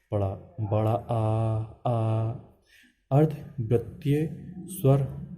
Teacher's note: ये बड़ा आ होता है, जिसमें मुख का द्वार पूरा बड़ा सा डब्बे की तरह खुल जाता है। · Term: विव्रत स्वर